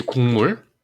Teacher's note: 기억이 이응으로 바뀌었죠. 비음이 아닌 것이 비음으로 바뀌었어요. 같은 조음 위치에 있는 비음으로. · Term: 비음화